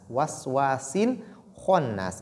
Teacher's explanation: Ici, kha est lu de façon emphatique et bit tafkhim. Et nun qui porte shadda a aussi ce qu'on appelle la nasilation al-ghunna.